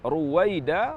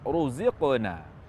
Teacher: Ini huruf ra berdhammah maka dibaca tafkhim